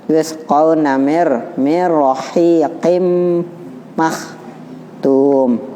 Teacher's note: Yusqauna min ketemu ro jadi mir. Walaupun tidak ada ro-nya, tasjidnya ro, tetap aja berlaku huruf idgham bila gunanya.